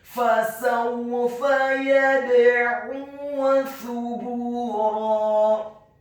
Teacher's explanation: Fasawfa yad'u thubura, kata thubura, huruf fa-nya dibaca tipis tarqiqa, lidahnya agak keluar sedikit, dhammah 1 harokat, kemudian huruf ba-nya dibaca tipis dhammah 2 harokat karena setelahnya ada huruf wawu sukun, dan di akhir ayat huruf ra-nya dibaca tafkhim tebal fathah 2 harokat karena setelahnya ada alif